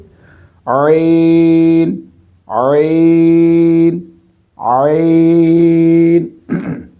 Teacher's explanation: جس جگہ سے ہا کی آواز نکلتی ہے اسی جگہ سے عین کی آواز نکلے گی، یعنی حلق کے درمیان والے حصے سے